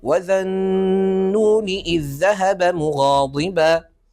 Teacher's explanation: لحرف اللام وذلك كثير في القران الكريم هناك مساله تكون هناك غنه بمقدار حركتين في النون التي ادغمت فيها اللام